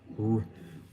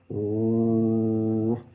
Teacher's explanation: So we have the English R, the R sound, R, where the tongue is kind of down in front. It goes up near the palate and then down, and we vocalize it. R. And the interesting thing about this particular sound, we say this is the R sound, but this is really the prevocalic R sound.